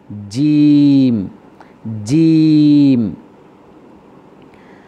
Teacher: জিম উচ্চারিত হয় জিহ্বার মধ্যখান তার বরাবর উপরের তালুর সঙ্গে লাগাইয়া।